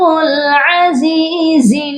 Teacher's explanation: زا کے ساتھ یائے مدہ ہے، اس کو بھی ہم نے ایک الف کے برابر لمبا کر کے پڑھنا ہے